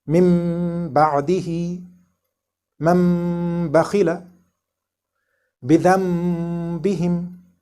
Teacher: When a noon sakin is followed by the letter ba, this noon sakin is changed into a mim and read with ghunnah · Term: iqlab